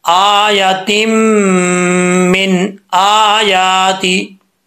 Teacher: यहां पर जो है यह नून जाहिर हो रहा है क्योंकि आगे रूफ हल्की में से हमजा आ रहा है